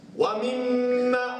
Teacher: Wa mimma, rapat di biak mulut. Bunyi dengung tu yang keluar daripada khaysyum tu bagi cukup 2 harakat.